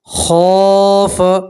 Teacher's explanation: خا کے ساتھ الف مدہ اس لیے آپ ایک الف کے برابر کھینچیں گے۔